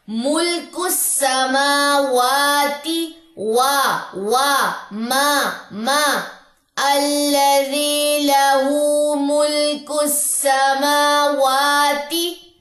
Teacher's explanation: میم کے اوپر کھڑا زبر 2 کاؤنٹس لمبا کیجئے، واؤ کے اوپر کھڑا زبر 2 کاؤنٹس لمبا کیجئے، تا کی زیر کو آپ نے لمبا نہیں کرنا۔ · تا کی زیر کو آپ نے لمبا نہیں کرنا۔ ملک السماواتی، ما الذی لہ ملک السماواتی۔